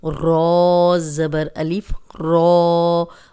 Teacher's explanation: اب رو پہ زبر ہے تو رو موٹی پڑی جائے گی اور لمبا بھی کریں گے